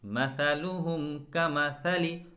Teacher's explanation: सा में कभी भी झरझराहट या सनसनाहट जैसी कोई आवाज़ ना आए। इसे बहुत ही मुलायम और हल्के तरीके से अदा किया जाता है।